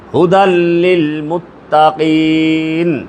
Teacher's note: এইখানে থামলে পরে 3 আলিফ টান হবে, মধ্যে আরজি বলে।